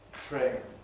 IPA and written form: treɪn (train)